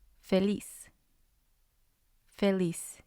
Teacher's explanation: And when I said the last syllable, I mean when we write it. So the stress is going to be on lis.